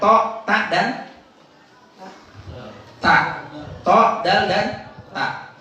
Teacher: Jadi huruf ta, dal, ta ini kan ujung lidah. Huruf ini keluar dari ujung lidah.